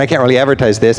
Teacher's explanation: In casual conversation, can't loses its T, making it sound like can.